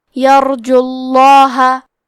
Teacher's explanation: لام کو تفخیم سے مطلب بھاری آواز میں پڑھیں گے